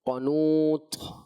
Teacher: طا میں صفت ہمس نہیں ہے، طا میں صفت شدت ہے، لہٰذا شدت کے ساتھ اس کو پڑھیں گے